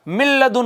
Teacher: اسی طرح یہ ہے من لدن، نون ساکن کے بعد لام آ گیا، لام حروف ادغام میں سے، لہٰذا نون ساکن کو لام میں مدغم کر دیں گے